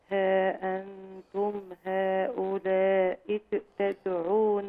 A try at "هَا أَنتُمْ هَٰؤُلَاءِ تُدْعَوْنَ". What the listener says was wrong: ل هؤلاء، مد المد الثاني.